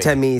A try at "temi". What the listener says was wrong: a little long vowel sound over the E. It's Teamy.